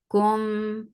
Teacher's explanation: this is idgham shafawi so you're keeping the sound in your nose for a longer time